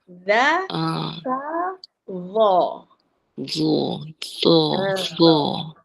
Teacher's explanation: Zo dia punya lidah kita ni dekat gigi. Ujung gigi depan.